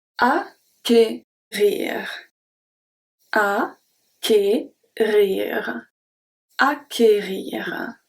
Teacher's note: You won't find it very often, but it's good to know that it's not pronounced k, you know, you don't have to do it twice. It's only the sound of one hard C.